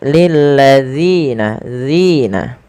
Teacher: panjangkan zi sepanjang 2 harakat dan hati-hati dalam melafalkannya, jangan sampai terganti dengan huruf zai. Jangan kita baca lil ladzina, akan tetapi lil ladzina, zina.